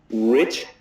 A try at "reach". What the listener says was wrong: Yeah, okay, so when you say it, it sounds a bit more like this word. So what we need to do is we need to really put the E. Reach.